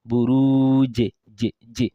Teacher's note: qalqala, the echo sound, is one of the attributes of Jim because it's one of the echo letters.